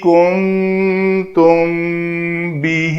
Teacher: میم ساکن کے بعد حرف با ہے تو یہاں پہ میم کا اخفا ہوگا